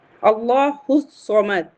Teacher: ہم یہاں حمزۃ الوصل اور لام دونوں کو نہیں پڑھ رہے ہیں، ڈائریکٹ ہا کو صاد سے ملا دے رہے ہیں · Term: حروف شمسی